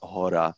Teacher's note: the czech word for mountain is hora and it is voiced um throughout the duration though there were some tokens in the illustration that were voiceless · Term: voiced h